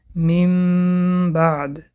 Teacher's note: به جای حرف نون حرف میم را با غنه می‌خوانیم. می بعد حالت لب‌ها هنگام تلفظ چنین است. لب‌ها به یکدیگر می‌رسند و سخت پخش کرده نمی‌شوند. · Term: اقلاب